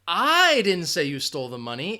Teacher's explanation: if you're emphasizing I what it means is well I didn't say you stole the money someone else said it